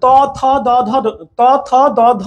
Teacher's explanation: ত আপনার জিহ্বাটা দেখেন, জিহ্বার যেই চূড়া, জিহ্বার যেই একবারে শীর্ষ অ্যাপেক্স, হ্যাঁ সেই সেই চূড়াটা আপনার দাঁতের গোড়াকে স্পর্শ করছে। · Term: দন্ত বর্ণ